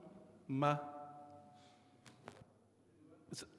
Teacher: quality okay so the meme is a quality that we call the quality of the sound comes through the nasal